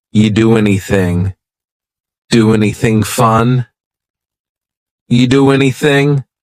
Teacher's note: we're going to push those two together because there's two n sounds side by side